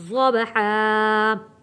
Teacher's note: ज़ौद को बा के साथ जोड़ेंगे क्योंकि बा के ऊपर जज़म है और बा हरूफ़े कलकला है